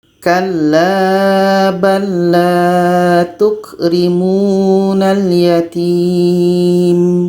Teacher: bunyi la yang pertama ini masuk kepada bunyi la Yang kedua · La pertama masuk kepada la yang kedua. Itu namanya idgham mutamatsilain karena bertemu huruf yang sama dan huruf yang pertama ini kita masukkan bunyinya kepada huruf yang kedua.